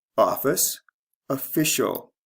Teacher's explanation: the stress changes from first to second syllable